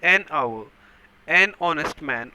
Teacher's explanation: h although h is not vowel but in this case an hour h is silent it is giving the sound of a vowel vowel sound there